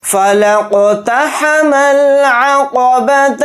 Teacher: فا کو جلدی پڑھیں گے، لام کو قاف کے ساکن کے ساتھ ملا کر پڑھیں گے، یہ الف نہیں پڑھا جائے گا، پھر دوسرے نمبر کا بھی الف نہیں پڑھا جائے گا، لام ڈائریکٹ قاف ساکن کے ساتھ ملا کر پڑھیں گے، اور قاف کے اوپر جزم ہے تو قاف کے اندر قلقلہ کریں گے، کیونکہ قاف حروف قلقلہ میں سے ایک حرف ہے۔